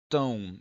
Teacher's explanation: esse M, por estar no final, ele, após a vogal, ele virou um tio sobre ela, e por estar no fim, virou um W. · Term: semivogal